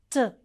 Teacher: the tip of the tongue should touch the gum line upper